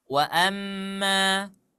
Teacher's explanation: Suara dengung yang sempurna derajatnya karena ada tasydid. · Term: ghunna musyaddadah